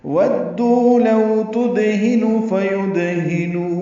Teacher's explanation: واو ہونٹوں کی نا تمام گلائی سے ادا کریں گے، دال سے ملائیں گے، دال کو واو سے ملائیں گے، دو واو مدہ ہے، 2 حرکات لمبا کریں گے.